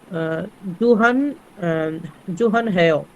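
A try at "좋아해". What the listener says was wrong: না, নিয়ন কোথায় আসলো? নিয়ন তো নাই। হ্যাঁ, এক হচ্ছে এটা। 2 নম্বর বিষয় ছিল হিয়তের পরে স্বরবর্ণ ইয়ং আসলে হিয়তের উচ্চারণ হয় না, হিয়ত এখানে অমিটেড থাকবে। কি হয়ে যাবে? জোয়া হ্যায়।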